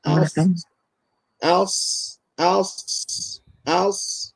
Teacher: hujung lidah pergi belakang gigi kacip sebelah bawah, ditekan bersamaan pangkal lidah.